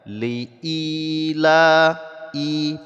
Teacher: ketika ada harakat fathah yang tegak seperti ini maka ini adalah mad asli panjangnya dua harakat